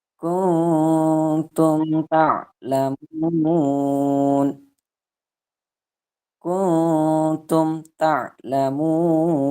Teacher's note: Ketika bacaannya jelas, tidak didengungkan, maka hukum bacaannya adalah idhar syafawi.